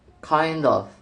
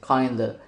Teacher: In slow, careful speech, the phrase is pronounced kind of, but in casual, connected speech, it becomes kinda. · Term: assimilation